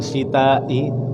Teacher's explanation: Wajib disambung antara mad tabi'i dengan hamzahnya itu, jangan dipisah, harus disambung. Syita'i, jangan syita'i, jangan, nanti lain arti. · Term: mad wajib muttasil